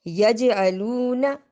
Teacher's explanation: اس میں ہم نے جیم کے اوپر قلقلہ کیا اور یجعلونا لمبا کر کے نہیں پڑھا